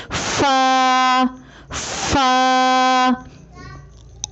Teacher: فا کی ادائیگی میں سامنے والے اوپر کے دو دانتوں کے سروں کو نچلے ہونٹ کے گیلے حصے پر لگا کر باریک آواز میں پڑھیں